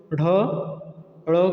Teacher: उच्छिप्त का मतलब क्या है कि जो झटके से ऊपर की तरफ फेंक दिया जाए। तो जब आप लोग ढ ड़ को बोलेंगे तो झटके से जीवा हमारी ऊपर की तरफ क्या करती है, वो हवा को फेंकती है। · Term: उच्छिप्त व्यंजन